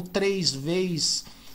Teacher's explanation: a gente aqui de São Paulo costuma colocar I onde não existe